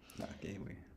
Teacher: you also get the voicing of the K because it's now in between ah and a